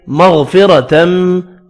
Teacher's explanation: را زبر کی وجہ سے پر پڑھا جائے گا